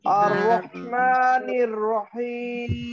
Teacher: র টাকে বারংবার উচ্চারণ না করে সুন্দর করে আবার র টা মোটা করে